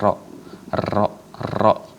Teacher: dikhususkan pada huruf Ra itu ada takrir, pengulangan Ra